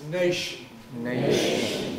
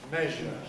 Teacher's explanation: alveolar fricatives somewhat retracted tongue voiceless